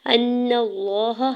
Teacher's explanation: نون کے زبر کو لام جلالہ کے ساتھ ملاتے ہوئے لام جلالہ کے اوپر کھڑی زبر دو حرکت کھینچ کے ادا کریں گے ، ہا کے زبر کو بغیر کھینچے ہوئے ادا کرنا ہے، · حمزہ کے زبر کو نون مشدد کے ساتھ ملاتے ہوئے نون مشدد پہ غنہ کریں گے اور نون کے زبر کو لام جلالہ کے ساتھ ملاتے ہوئے